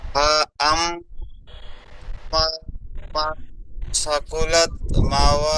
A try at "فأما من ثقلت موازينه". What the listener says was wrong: ফাআম্মা মিমটি আলিফ মাদ্দা এখানে টান দিয়ে পড়তে হবে। ফাআম্মা মান সাকুলাত।